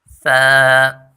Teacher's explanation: ث کی مخرج زبان کی نوک جب ثنایا علیا کے کنارے سے لگے یعنی سامنے والے دو دانتوں کے کنارے سے ملے تو یہ حرف ادا ہوتے ہیں۔